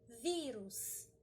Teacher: uma palavra paroxítona porque a penúltima palavra é a mais forte